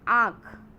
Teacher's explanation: जब आप आँख बोलते हैं तो कहीं ना कहीं आप नाक का भी प्रयोग करते हैं और आप हलक का भी प्रयोग करते हैं। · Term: अनुनासिक